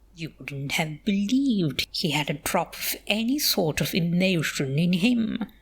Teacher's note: I really like the way you put the emphasis on believed.